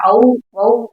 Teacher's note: தனியாக ஒலிக்கும் போது ரெண்டு மாத்திரை அளவுல ஒலிக்குது முழுமையா ஒலிக்குது அதே சொல்லின் முதல்ல வரும்போது அவ் வவ் ஒலிக்கும் போது ஒன்றே மாத்திரையா வருது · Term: அவகார குறுக்கம்